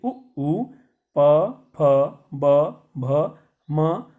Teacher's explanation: और त, थ, द, ध, न, ल, स, इनका उच्चारण दंत से होता है। फिर उ, प, फ, ब, भ, म, इनका उच्चारण ओष्ठ से होता है।